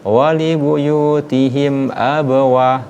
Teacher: huruf mim ketemu dengan huruf hamzah, huruf alif. Wali buyutihim abawa, tidak boleh dibaca dengung.